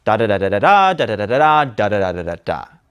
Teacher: we end on a pitch lower than our delivery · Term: a lower register